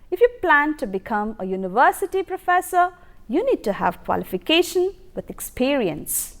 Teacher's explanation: if you plan to become a university professor you need to have qualification with experience with is not really emphasized